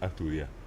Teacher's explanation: dice a estudi no te dice estudio estudio como palabra llana dice a estudi y te lleva al acento al final